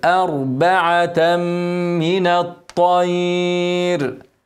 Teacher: تنوين بعده ميم ادغام بغنه هنغنى حركتين